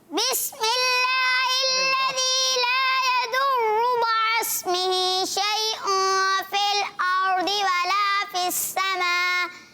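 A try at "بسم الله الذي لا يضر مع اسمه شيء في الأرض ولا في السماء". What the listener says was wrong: آپ نا نارمل پڑھیں, تلاوت نہیں کریں, نارمل نا ویسے پڑھیں. بسم اللہ الذی اس طرح.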